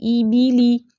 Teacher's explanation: اے کی ساؤنڈ نہیں پیچھے آنی چاہیے، ای کی ساؤنڈ آنی چاہیے